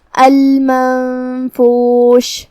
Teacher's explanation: یہاں حکم ہے اخفاء، اور اخفاء کا معنی ہے چھپا دینا، تو ہم نون کو بغیر ظاہر کیے ہوئے چھپاتے ہوئے لیکن غنہ کے ساتھ یہ حکم کو ادا کریں گے